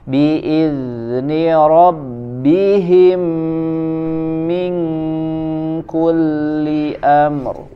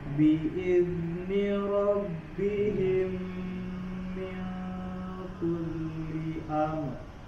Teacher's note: Minku ikhfanya dibaca tipis ya, karena huruf kaf dia tipis